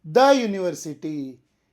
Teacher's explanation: ಮೊದಲ ಅಕ್ಷರ ಯು ಆಗಿದ್ದರೂ ಅದರ ಧ್ವನಿ ಸಹ ಯು ಅಂದರೆ ವ್ಯಂಜನದಿಂದ ಆರಂಭವಾಗುತ್ತದೆ . ಆ ಕಾರಣ ಇದು ದ ಯೂನಿವರ್ಸಿಟಿ ದಿ ಯೂನಿವರ್ಸಿಟಿ ಆಗುವುದಿಲ್ಲ. ಯು ಅನ್ನೋದು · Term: ವ್ಯಂಜನ ಉಚ್ಚಾರ